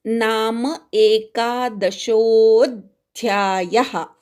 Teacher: नाम अधिक एक मिळून नामैक झालंय, पण आपण ते फोडून म्हणतो नाम एकादशोऽध्यायः. शो वाढवायचा आहे आणि अवग्रहावर आघात घ्यायचा आहे. अध्यायः असं ऐकू आलं पाहिजे.